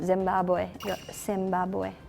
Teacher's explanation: And Z, we kind of like substitute it into S.